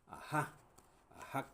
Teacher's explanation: Y ahí suena, por supuesto, la J, no como J del español. Por eso decimos que a veces es una aspiración. · la J no siempre es J como tal, sino que a veces suena más como una aspiración y a veces suena en serio como una G.